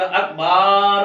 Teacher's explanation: با پر زبر کھینچیں گے تو الف مدہ بن جائے گا، اکبار بن جائے گا، تو یہ بھی بہت بڑی غلطی ہے۔